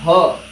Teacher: a voiced labiodental fricative